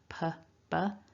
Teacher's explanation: Then we've got that short vowel, and then a b, where we want some vibration in the throat. The p and the b have the same mouth shape. The two lips come together, p, b. But the difference is with p, we want a puff of air.